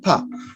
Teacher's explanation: The sound pa is produced with aspiration most of the times